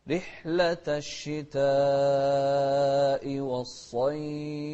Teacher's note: شوف رحلة، الراء المكسورة مرققة، رحلة الشتاء والصيف. شوف الصاد مفخمة، ونمد الشتاء 4 حركات. رحلة الشتاء والصيف، ونوضح الفاء ونهمس فيها أيضا.